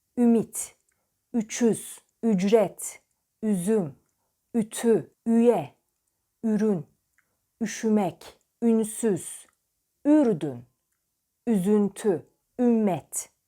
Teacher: yuvarlak dar öndil ünlüsü dudaklar öne doğru uzar yuvarlak bir biçim alır ve büzülür